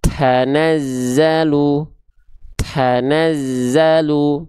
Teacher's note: Yang kedua kurang tepat karena kita melafalkan huruf t-nya berlebihan atau lebai. Apanya? Si percikan nafasnya.